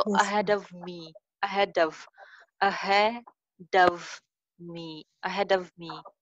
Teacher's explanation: अहेड का डी जो है वो नेक्स्ट चला जाएगा उसके साथ · ऑफ को हम ऑफ नहीं अफ या अव में चेंज कर देते हैं. yes, क्योंकि फ और व की साउंड एक ही जगह से आर्टिकुलेट होती है.